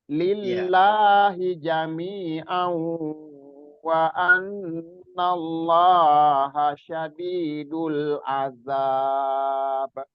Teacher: kata Allahnya yang lillah itu kecepatan, kata Allah itu wajib dua harokat.